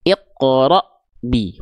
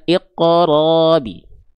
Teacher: Hamzah sifat-sifatnya adalah syiddah, tertahan suara ya. Maka huruf-huruf yang berjumpa dengan hamzah sukun itu harus tertahan ya. · Tuh kesalahan ketika kita melafalkan Hamzah sukun jangan sampai tertukar dengan huruf ain ya. Dalam keadaan sukun jangan sampai dibaca panjang. Harusnya terputus, tertahan syiddah.